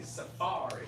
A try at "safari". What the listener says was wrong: Y'all were stressing on the first syllable, saying suffering, right? Right, which is related to you were saying suffering on the first syllable, and I was hearing suffering. Safari, yeah. Safari.